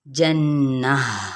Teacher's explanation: नून पे गुन्ना करते हुए यहाँ पे ताय मरबूता है तो हम वक्फ कर देंगे तो ये हा में तब्दील हो जाएगा, जन्नह, ठीक है।